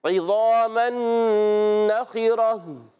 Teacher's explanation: گولتا کو ہا سے بدلیں گے، ہا کی ادائی کلیئر